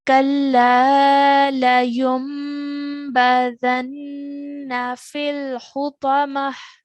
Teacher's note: we need to press down on the noon, holding that sound, nasal sound for 2 counts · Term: noon gunna sound